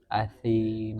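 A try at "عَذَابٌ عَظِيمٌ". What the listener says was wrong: kafarin azim, azim. Ini kurang keluar ya lidahnya. Kafarin azim, gitu. Azim, kafarin azim.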